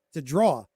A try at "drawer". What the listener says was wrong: there's two syllables to the word drawer